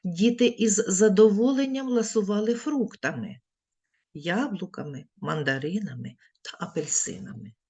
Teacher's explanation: узагальнювальне слово вимовляємо з підвищеною інтонацією після нього робимо паузу із знижуємо Голос Діти із задоволенням ласували фруктами яблуками мандаринами та